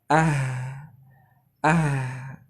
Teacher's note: huruf H ketika dia sukun dia mengalir